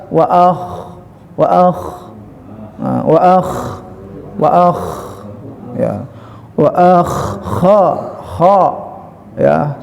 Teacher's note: Si alif huruf aqsal naik ke kha huruf adnal halqi, dan dia memiliki sifat isti'la tadi, diangkat lidahnya ke atas.